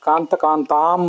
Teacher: ಕಾಂತ ಕಾಂತಾಂ ಅಂತ ದೀರ್ಘ ಇರಬೇಕು, ಹಾಗೆ ಸುದುರ್ಲಭಾಂ ಅಂತ ದೀರ್ಘ ಇರಬೇಕು